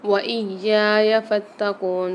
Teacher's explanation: واو کے اوپر اور یا کے اوپر دونوں مشدد آ رہی ہے، ان کو سختی اور جماؤں کے ساتھ پڑھیں گے